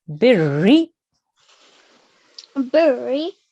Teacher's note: you add the harakat, which is the kasra, and you really harden the Ra sound